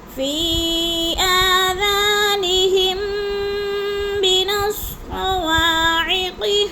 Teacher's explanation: آذانہم، آذا کو بھی تھوڑا سا ہم نے لمبا کرنا ہے، نہم پہ ادغام شفی ہے، میم ساکن کے بعد میم مشدد آ گیا، تو سختی سے جما کر پڑھیں گے